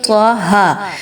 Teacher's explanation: دونوں پر کھڑا زبر ہے، دونوں کی مقدار 2 الف کے برابر رکھیں گے